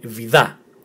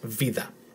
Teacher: if the tone was in the second syllable it will be 'vithaa' but this one is on the first syllables it's 'veetha'